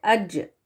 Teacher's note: جب جیم ساکن بن کر آئے تو اس کو قلقلہ کے ساتھ یا باؤنس کر کے ادا کیا جاتا ہے